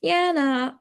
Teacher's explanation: the fall rise is like politeness, hesitation, doubt. Like yeah, nah, it could be hesitation or doubt.